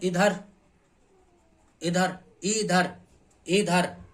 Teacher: निरनुनासिक केवल मुख से केवल मुख से इनका उच्चारण होता है।